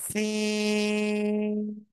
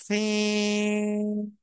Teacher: জিব্বার আগা, সামনে নিচে, দুই দাঁতের পেট ও আগার সাথে লাগাবো।